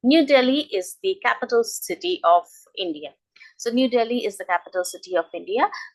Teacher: So there is no rising or falling intonation. It's just flat. Okay, because I'm just giving a statement. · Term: neutral intonation